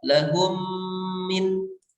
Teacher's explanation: mim yang pertama yang sukun dimasukkan kepada mim yang kedua, maka itu disebut dengan idgham mislain shaghir.